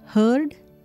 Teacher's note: in this the r sound is not heard